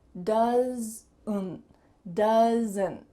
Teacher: Do you hear that added schwa sound in my throat?